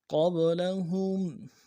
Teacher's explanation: قاب لام کو نرم سے ادا کرنا ہے، ہا کو میم ساکن کے ساتھ ملانا ہے، میم ساکن میں غنہ کریں گے